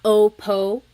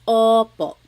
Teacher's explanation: Sometimes I think of it like having a ball in your mouth. Your tongue gets kind of pushed back and down a little bit and the inside of your mouth is open and wide.